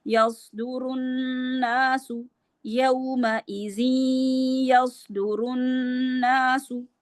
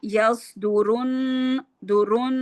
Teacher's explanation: نون مشدد پہ بھی 2 حرکات کے برابر غنہ